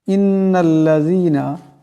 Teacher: ইন্নাল্লাযীনা, এখানে নুনের উপর তসদিদ আছে, নুন মুশাদ্দাদের এক আলিফ পরিমাণ গুন্না হবে। ইন্নাল্লাযীনা এমন করে।